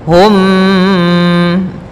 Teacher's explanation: ada mim mati bertemu mim maka kitaakan hukum tajwidnya Im bacanya masukkan mimnya kepada mim setelahnya dan ditahan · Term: tahan gunahnya